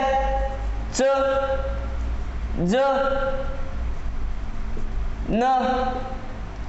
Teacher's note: जर आपली जीभ तो वर्ण उच्चार करत असताना टाळूला टेकत असेल तर त्याला तालव्य वर्ण म्हणतात